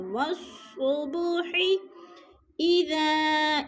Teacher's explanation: والصبح اذا، اذا پہ مد منفصل ہے، حروف مدہ کے بعد حمزہ دوسرے کلمے میں آ گیا ہے تو ادھر مد منفصل ہے، یعنی 4 الفی مد ہے، 4 الف کے برابر ہم نے اس کو کھینچ کر پڑھنا ہے